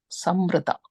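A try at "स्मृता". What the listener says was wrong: Yeah, smrita. SM. I think you got the full sa you're saying, it's just is there, smrita.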